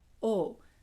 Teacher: in central Minnesota, they tend to not make a diff thong. They have a monothong. So it's just O.